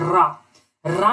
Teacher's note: व्यंजन जिसके उच्चारण में जिह्वा 2-3 बार कंपन करता है, रा कंपित कर रही है, इसीलिए इसे हम लोग प्रकंपित व्यंजन कहते हैं या प्रकंपित व्यंजन कहलाती है।